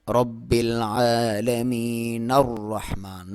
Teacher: نون کو را کے ساتھ ملائیں گے